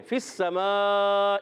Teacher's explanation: فی السماء، فا کو سین سے ملانا ہے، فا کی ادائیگی کلیئر، فا اوپر والے دانت کے کنارے نیچے والے ہونٹ کے تر حصے سے ادا ہوتا ہے، فا یاد رکھنا ہے، سین سیٹی کے ساتھ ادا ہوگا، اور یہ مد ہے مد متصل، حرف مدہ کے بعد حمزہ اسی کلمے میں، فی السماء، تو حمزہ اسی کلمے میں آنے کی وجہ سے مد متصل ہوتی ہے۔